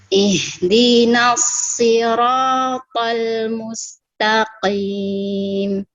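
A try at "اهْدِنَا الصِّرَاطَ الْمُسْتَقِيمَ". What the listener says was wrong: Jangan sampai na terpengaruh dengan so.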